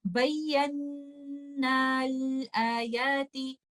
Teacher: میں الف مد کو ڈراپ کر دوں گی اور اس کو اور نون کو لام کے ساتھ ملا دوں گی